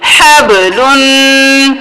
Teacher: قاف قا با جیم دال میں سے با ہے تو ہم قلقلہ کریں گے